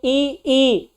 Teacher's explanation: ई में देख रहे हैं होंठ पे कोई प्रभाव नहीं पड़ रहा है, इसलिए होंठ क्या है, आवृत्ताकार मुखी है।